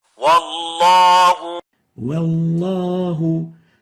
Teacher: velarizing the unextendable wow, making tafkhim for it, when followed by a velarized letter.